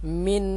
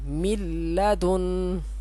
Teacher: غنہ بھی نہیں کریں گے، من اس طرح نہیں پڑھیں گے، اس میم کا لام میں ادغام کریں گے